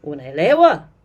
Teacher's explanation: And in KiSwahili, in KiSwahili, people often really raise that last, in a question, they really raise the intonation at the very end